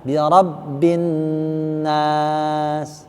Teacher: Bin agak lama. Gunnahnya ya.